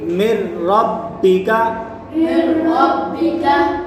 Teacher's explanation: نون ساکن کے بعد یہاں حرف یرملون میں سے را آ رہا ہے تو یہاں را میں گننا نہیں کریں گے